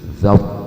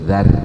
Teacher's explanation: membaca ro sukun harus dengan mencucu, dzaw, tidak boleh dzar.